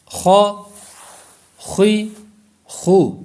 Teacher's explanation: حلق کے اوپر والے حصے سے یہ ادا ہوگا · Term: خا